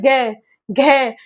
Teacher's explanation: ग घ जब हम बोलते हैं तो झनझनाहट सी महसूस होती है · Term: सघोष